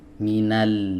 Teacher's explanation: Jadi bukan kepala lidahnya saja tapi tepi lidah bagian depannya ini disertakan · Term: huruf lam